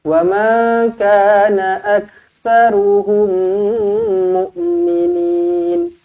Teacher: Wa ma kana aktsaruhum mu'minin. Mim kosong bertemu dengan mim sabdu. Jumpa dengan mim sabdu, terus rapatkan bibir, dengungkan dua harokat.